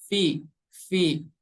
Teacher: huruf v ini tempat keluarnya dari ujung seri atas kita menempel ke perut bibir bagian bawah yang bagian belakangnya yang bagian basahnya v v huruf v yang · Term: huruf Fa